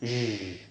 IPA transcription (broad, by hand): ʒ